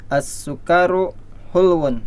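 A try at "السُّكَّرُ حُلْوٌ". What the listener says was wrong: As-sukkaru ya, kafnya jangan dipanjangin.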